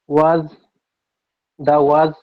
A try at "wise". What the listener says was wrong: এখানে একটা ভুল হয়েছে, আমি ধরিয়ে দিই। এখানে হচ্ছে এই যে ভিসিবি রুলসে পড়ছে না, এই আয়ের উচ্চারণটা আয়ের মতো হবে, কি হবে এটা তাহলে?